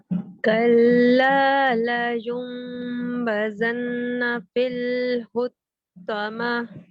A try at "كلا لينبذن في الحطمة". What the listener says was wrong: शाबाश देखिए लयुंबदन गुन्ना का पूरा टाइम है फिल हुतमा किसी भी हर्फ पर तशदीद नहीं है ठीक है दोबारा पढ़ते हैं इस आयत को